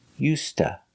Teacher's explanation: The D is pronounced like a T, used, and to is pronounced ta.